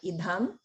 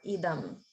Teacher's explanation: Sometimes it sounds a little like you're saying dham, like idham, but just notice it's not a mahaprana. It's like the regular alpa prana